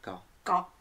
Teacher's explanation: le K il est làhaut le K il sort à la fin de la bouche